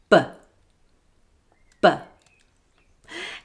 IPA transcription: b